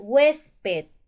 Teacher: mayor fuerza de voz penúltima sílaba si tiene la mayor fuerza de voz en la penúltima sílaba es una palabra grave